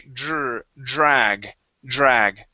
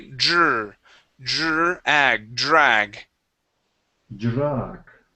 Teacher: treat that D sort of like a j we make a vibration sort of like if you were to say job